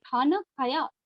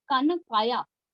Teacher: क को भी ख का जो महाप्राण ध्वनि है उसको उच्चारित करने में यहां के मूल तेलुगु भाषी लोग थोड़े पिछड़ जाते हैं